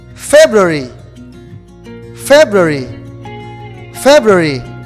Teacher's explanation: the stress is in the first syllable like january